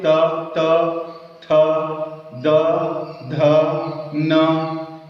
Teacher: आपकी जिह्वा दांत में टकरा रही है